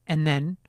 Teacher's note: I rarely produce the consonants at the end of the word and. · I can tell that my tongue doesn't touch the alveolar ridge, but I also hear a distinct nasal quality to the phrase. · I move right on to the interdental fricative at the beginning of the word then.